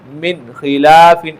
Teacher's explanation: اب دیکھیے یہاں پر نون ساکن ہے اس کے بعد 6 حروف میں سے خوا ہے نقطے والا تو اس میں بھی غنہ نہیں ہوگا، بغیر غنہ کے جلدی اس کو ظاہر کر کے پڑھیں گے